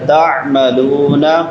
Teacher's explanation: عین جھٹکا دینا ہے اور عین نکالنی ہے، حمزہ نہیں پڑھنا